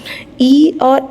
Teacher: ई और ए जब आप बोलेंगे तो आपके जीभ का केवल आगे का भाग ही हिलेगा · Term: अग्र स्वर